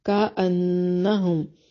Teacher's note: نون مشدد پہ غنہ ضروری ہے